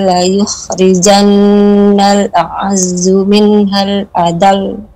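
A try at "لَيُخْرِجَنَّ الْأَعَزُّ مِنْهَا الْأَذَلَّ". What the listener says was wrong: La pada kata azal ya, ini kurang naik lagi, kurang dinabar Ummu. Minhal azal. Dari la yukhnam, dari la yukhrijannal. Azal. Ya, masih kurang. La yukhrijannal a'azzu minhal azal. Jadi yang hendaknya menjadi koreksian pada kesempatan kali ini yaitu pada kata azal ya.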